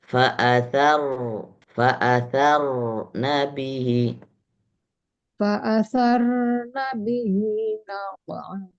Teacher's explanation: Rnya kembalikan ke tebal.